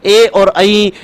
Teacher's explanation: ए और आई ये दोनों वर्ण कंठ और तालु से बोले जाते हैं, ना कंठ से ना तालु से, कंठ तालु से बोले जाते हैं।